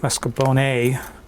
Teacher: italy and nonetheless she pronounced it well she pronounced it marscapone as if the r was in the first syllable it's in the second syllable